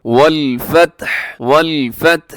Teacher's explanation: آخر میں ہا کا ساؤنڈ بھی دینا ہے، ہا ساکن ہو جاتی ہے. والفتح تا کو ہلانا نہیں ہے، یعنی والفتح تا ہل گئی ایسے نہیں.